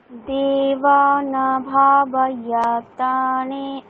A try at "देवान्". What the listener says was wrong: দেবা ন কেন নয়, নিচে একটা কিছু দাগ আছে, দেখুন কি আছে। উচ্চারণটা কেমন বলছেন, দেবা ন আছে কিন্তু ওখানে অকার নেই, নিচে হসন্ত আছে একটা, তাহলে দেবান।